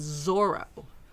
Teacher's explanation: when he really hits that Z, and it's Zorro. Yeah, but with more of a rolled R.